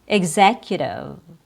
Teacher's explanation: E X is pronounced with a short I sound plus G plus Z E short I plus G E egg plus Z eggs when it's an unstressed syllable like in the word executive. Z is stressed. Egg is unstressed.